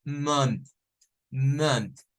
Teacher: es una vocal que suena como una a al principio y termina siendo una u